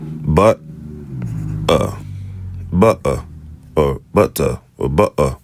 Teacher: somebody in Britain, it may sound like they're saying butter or butter or butter. That is called a glottal stop.